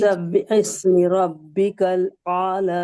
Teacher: را پر زبر ہے اس لیے را موٹی پڑ جائیں گی